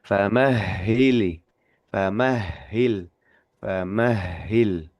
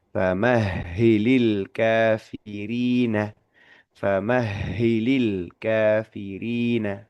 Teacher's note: Ketika kita mengucapkan huruf H tasdid, kita tahan sebentar itu ternyata juga diiringi dengan aliran nafas yang ternyata terus-terusan gitu selama pengucapan huruf H tasdid itu.